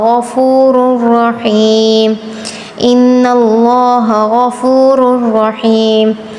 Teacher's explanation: را دونوں را پر تفخیم کریں گے